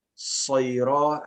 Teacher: Ya. Adapun huruf sifat tambahan adalah sofir, harus ada siulan sedikit ya.